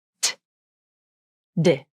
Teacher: There is more aspiration, or air release, for the T consonant than the D consonant. The lips do not participate in these sounds, so the lips can be relaxed or in a neutral position.